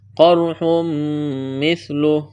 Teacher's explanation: تنوین کے بعد میم مشدد ہے، ادغام کریں گے، غنہ کریں گے · قاف اور را کو موٹا کرنا ہے